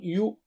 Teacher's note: یو ہونٹ کو گول کر کے پڑھیے